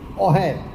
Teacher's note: હશે ની જગ્યાએ હ નીકળી જતાં ઓહે થાય છે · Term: હ શ્રુતિ નો અભાવ